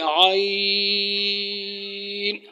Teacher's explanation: یہ ہے عین، وسط حلق سے اس کو نکالنا ہے، یہ حروف حلقی ہو جاتے ہیں